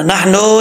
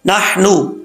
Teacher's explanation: अब नून को लंबा नहीं करना, नहनो नहीं पढ़ना, नून पेशनू नहनु कद्दरना।